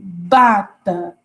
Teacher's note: Quando eu falo bata, tem uma vibração, né? Então, é mais forte. Então, vai ser o B, não vai ser o P.